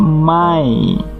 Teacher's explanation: Jadi tidak ada suara an lagi, tapi adanya suara ya, suara huruf y kalau transliterasinya mai. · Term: idgham